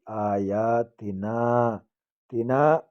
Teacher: الف خالی آگے زبر ہے، الف مدہ کہتے ہیں اس کو، ایک الف کی مقدار اس کو بھی کھینچیں گے.